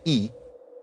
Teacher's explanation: notice that the action is up here, top front of the mouth